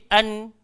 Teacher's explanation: Nun duduk dekat belakang lam. Kita ke belakangkan lidah kita sikit. An. Ke depan balik.